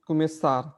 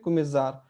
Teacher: अगर एस, एक एस है, उसके आगे पीछे वॉवेल है, तो स क्या बन जाता है? एक तरह से ज बन जाता है ना?